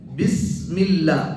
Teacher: பா, அந்த பாங்கிற எழுத்துடைய மஹ்ரஜ் என்னன்னா ரெண்டு உதடுகள் ஒட்டுறது தான்